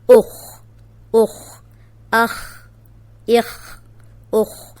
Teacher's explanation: اب یہ خو موٹا ہے، جزم کے ساتھ بھی ہم موٹا ہی پڑھیں گے